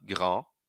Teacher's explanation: Grand para no N, no A nasal.